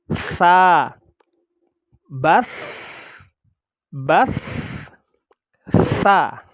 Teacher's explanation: Suara tidak tertahan. Jadi dalam mengucapkannya, suara masih berjalan. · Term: rikhwah